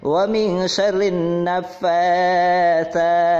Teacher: Ini dibacanya dimasukkan ke huruf nun. Alif lamnya dianggap tidak ada dan dimasukkan ke dalam huruf nun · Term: alif lam syamsiah